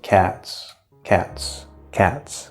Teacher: when we stress it, there's sort of like a little arc, a little motion to it.